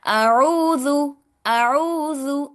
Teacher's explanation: عین کو حلق کے درمیانی حصے سے نکالنا ہے۔ عین کو آپ پڑھیں گے تو آپ کی جو حلق کا درمیانی حصہ ہے وہ وائبریشن ہوگی، وہاں پر وائبریٹ کرے گا، ٹھیک ہے؟